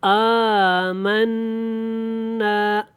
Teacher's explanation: نون کے اوپر غنہ بھی کرنا ہے، شاد جب آتا ہے نون کے اوپر تو وہاں پہ غنہ کیا جاتا ہے، ٹھیک ہو گیا۔